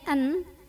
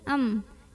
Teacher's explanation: bunyi nun sukunnya yang tadinya an diganti jadi bunyi mim sukun, am, dan kita tahan dulu bunyi dengungannya. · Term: iqlab